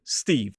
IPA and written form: stiːv (Steve)